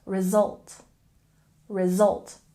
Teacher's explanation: And if we look at pronunciation, in result, we have a stress on the second syllable